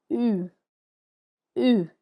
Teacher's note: We form this sound by saying O first. So the lips are in O shape, and then we say E through it.